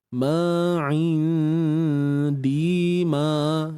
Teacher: untuk ikhfa haqiqi kita kena sembunyikan nun dan jangan sebut nun tepat pada makhrajnya.